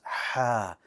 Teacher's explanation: And the way that the air comes out, it's pretty sharp. It's almost as if your throat is constricting a little bit in the back and the air comes out with force.